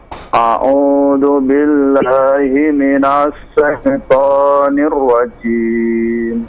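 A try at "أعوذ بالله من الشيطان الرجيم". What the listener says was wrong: Sya-nya coba masih tadi. Sya seperti asyhadu. Jadi nafasnya banyak ya, menyebar.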